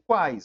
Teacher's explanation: Tem duas semi, o I e o U, e uma vogal forte, que é o A. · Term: tritongos